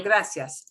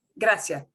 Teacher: sometimes i hear you pronounce s but sometimes i hear as if you're not pronouncing it